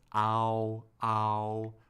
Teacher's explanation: this is known as a descending dip thong meaning our stress the stress occurs more on the first vowel of the pair